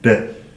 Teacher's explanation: So this is where the tongue is at the front of the mouth and it flicks through from the palate